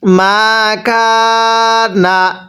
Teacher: জবরের পরে খালি আলিফ এক আলিফ টানতে হয়